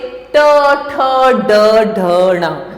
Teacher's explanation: ट ठ ड ढ ण, और इसका उच्चारण स्थान मूर्धा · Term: ट वर्ग